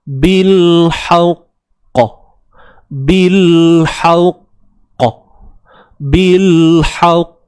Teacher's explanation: Babil ba baris atas, ba baris bawah, bi, tapi masuk terus dalam lam yang sukun kat sini, lam yang mati